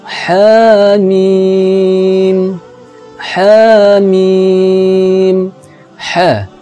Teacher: cara membacanya ialah dipanjangkan dua harokat · Ha ini dua ejaan huruf, yaitu ha dan alif, maka dibaca panjang dua harakat. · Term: mad lazim Harfi mukhaffaf, mad lazim harfi mukaffaf